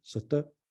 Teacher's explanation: Probably actually in Late Egyptian, just an unaspirated T